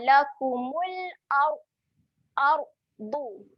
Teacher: Ra yang mati dekat sini dia menjadi ra yang tebal kerana sebelumnya berbaris atas. Okey. Jadi kita kena muncung.